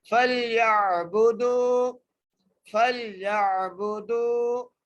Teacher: دال کو واو سے ملا کر کھینچ کے پڑھنا ہے، فَلْيَعْبُدُوا، فَلْيَعْبُدُوا، دال کو کھینچ کے اس لیے پڑھیں کیونکہ یہاں پر حرف مدہ آ گئی ہے، حرف مدہ میں سے وہ مدہ آ گئی ہے، ٹھیک ہے جی۔